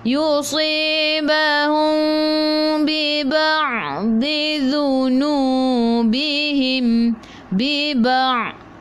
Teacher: Ain jaga daripada kerongkong bukan daripada hidung. Masuk dalam ain ada sukun.